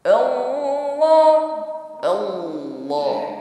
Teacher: mengucapkan laf Allah yang sebelumnya ada fathah maka hukumnya tafim ya tebal